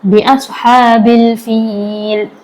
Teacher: अब ये हा हलक के दरमियान हिस्से से निकलेगा, मुंह से हवा बाहर आएगी।